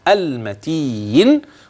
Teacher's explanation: وخلي بالك الحروف مرققه والنون لا غنه فيها واضحه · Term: مرققة